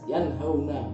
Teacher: Contoh lain yanhauna nun sukun bertemu ha maka jelas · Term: idhar